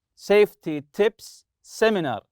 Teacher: The sound sa, you have to link it together as if it's one sound. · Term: linking